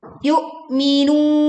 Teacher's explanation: hamzah sukun, pita suara tertutup sehingga suara terhenti, tidak mengambang